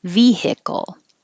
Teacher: so you'll have a little delay between the V and the ick because you're pushing air.